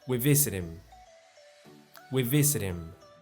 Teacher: The final consonant sound in a word is linked to the beginning vowel sound of the word next to it, and the two words sound like one word. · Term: linking sounds